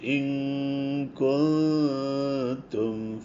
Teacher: കാരണം ഇൻകുന്തും കാഫ് വരുന്നത് വായൻ്റെ പുറകിൽ നിന്നും താ വരുന്നത് മുമ്പിൽ നിന്നാണ്. അപ്പോൾ കാഫ് പറയുമ്പോൾ വായിലൂടെ ശബ്ദം വരാതെ മൂക്കിലൂടെയാണ് ശബ്ദം വരേണ്ടത്. അതേസമയത്ത് താ പറയുമ്പോൾ രണ്ടും മൂക്കിലൂടെയും വായിലൂടെയും ശബ്ദം വരണം.